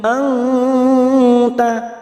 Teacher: kita samarkan bunyi nun sukun tiga harakat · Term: Ikfa Hakiki